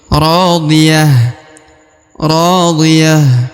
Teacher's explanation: Huruf ta marbutoh berubah menjadi ha karena dia disukunkan atau diwakafkan di ujung ya, meskipun berharokat un.